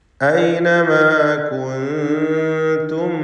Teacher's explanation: ഐനമാ കുൻതും, ഈ പദത്തിൽ കുൻതും സാക്കിനത്ത നൂനും ശേഷം താവുമാണ്. ഇഖ്ഫ ഹഖീഖി നൽകി സാക്കിനത്ത നൂനിനെ അവ്യക്തമാക്കി മണിക്കേണ്ടതാണ്